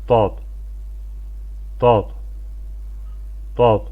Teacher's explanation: Yuxarı azı dişlərə toxundurmaqla tələffüz edilir. Azərbaycan dilində olan d və z səslərinin qarışığı və qalın formasıdır. Burada daha çox səslənmədə belə deyək 70-80% D hərfi bir 20% Z hərfin yəni səsi gəlir. · Bu hərfin məxrəci, yəni çıxış yeri dilin sağ və ya sol tərəfini, daha çox sağ tərəf məşhurdur, yuxarı azı dişlərə toxundurmaqla tələffüz edilir. Azərbaycan dilində olan D və Z səslərinin qarışığı və qalın formasıdır. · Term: dad hərfi